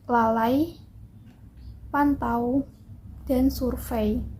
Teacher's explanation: yang pertama yaitu diftong naik dimana huruf vokal lidah posisi lidah vokal kedua itu lebih tinggi daripada vokal pertamanya